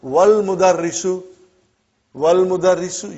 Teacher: Wal mudarrisu, you did not pronounce Hamza. Okay? Because it's Hamzatul Wasal.